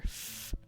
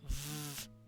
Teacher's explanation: they have the exact same sound just one is soft and voiceless the other is voiced